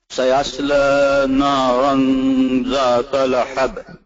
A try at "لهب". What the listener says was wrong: Yeah, when you pronounce the lahab, it is the small ha, right? So ha, lahab. It's not lahab. Lahab. Lahab. There is no shadda on the ba, so you don't have to say lahab. You have to say lahab. But there is a qalqala at the ba, so lahab.